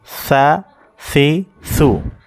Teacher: এরপরে যে অক্ষরটা, যেমন সা অক্ষর, এই সা অক্ষরের উচ্চারণটা হচ্ছে, সা অক্ষরটা জিহ্বার আগা থেকে নরম হবে। জিহ্বার আগা থেকে সা অক্ষরের উচ্চারণটা হবে নরম।